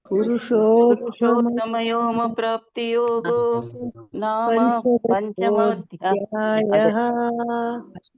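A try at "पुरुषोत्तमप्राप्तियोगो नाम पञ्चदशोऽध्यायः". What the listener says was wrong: ಪುರುಷೋ ಅಲ್ಲಿ ಒಂದು ಯೋ ಬಿಡಬೇಕು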